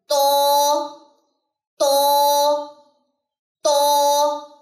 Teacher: اس کو کبھی بھی تا نہیں پڑھنا, تا نہیں کرنا, یعنی کہ اس کو باریک نہیں کرنا. طا موٹا لیٹر ہے. تو تو تو. نیکسٹ ہے جی ضا.